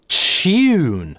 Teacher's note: right звучит как rightsss, поэтому часто встречается еще вариант chjune. Т.е. /t/ в таком сочетании звучит фактически как /tʃ/, но /j/ сохраняется - chyoone. Поэтому такие варианты я считал как классику — tune. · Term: аффрикацией